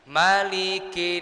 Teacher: Maliki itu seharusnya itu pendek semua.